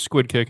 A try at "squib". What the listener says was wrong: Squib. No, it's not a squid kick. It's a squib with a B, as in Brian.